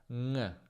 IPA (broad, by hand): ŋ